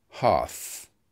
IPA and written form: hɑːθ (hearth)